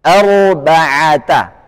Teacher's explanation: ro sukun sebelumnya fathah tebal